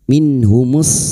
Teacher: Nun sukun bertemu ha idhar halqi. Nun sukun dibaca jelas tanpa mendengung.